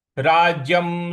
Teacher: य पर जो अनुस्वार है उसका उच्चारण हमें म ले आना है